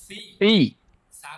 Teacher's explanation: জিহিবার আগাটা এই সামনের দুই দাঁতের আগার সাথে লাগান।